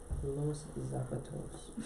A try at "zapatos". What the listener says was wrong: your accent in the wrong spot. But you got zapatos. You're gonna hit the O on it. Zapatos.